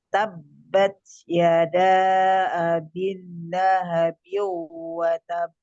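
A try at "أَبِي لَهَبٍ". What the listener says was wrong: Jangan double L, abil. Tapi panjang. Abi lahabiu. Tahan dulu.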